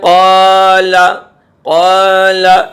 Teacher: قاف جو ہے حروف مستعلیہ ہے، منہ بھر کے پڑھا جاتا ہے